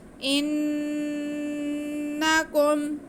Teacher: انکم، کاف پہ پیش ہے، میم ساکنہ کھینچنا کسی کو بھی نہیں ہے، بس نون پہ غنہ ہوگا ایک الف کے برابر، یعنی کہ ہم نون کو، حمزہ کو نون کے ساتھ ملاتے ہوئے نون کے آواز کو ناک میں لے کے جائیں گے۔ انکم ظلمتم، وا کو نرمی سے پڑھنا ہے، موٹا کر کے پڑھنا ہے، لیکن سیٹی کی آواز نہ آئے۔